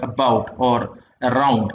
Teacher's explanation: Now it is central because it comes here. It's a central vowel and it is close to the half open position.